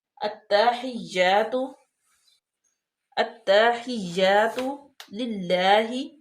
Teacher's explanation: اب دیکھیں کہ حمزہ کے ساتھ لام ہے، اور لام جو ہے وہ ساکن ہے، اس کے بعد آ گیا تا۔ تو ہم لام کو سائلنٹ کر دیں گے اور حمزہ کو ڈائریکٹ تا میں ملائیں گے۔ تا مشدد بھی ہے، اس کو سختی کے ساتھ بھی پڑھیں گے